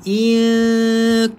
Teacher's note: So bacanya dengung dengan cara senyum. Iqwantu. Sebab kaf nipis, ta pun huruf yang nipis.